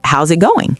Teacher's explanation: Notice the intonation it falls at the end.